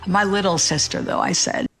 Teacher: she cuts into that vocal fry when she's talking about her little sister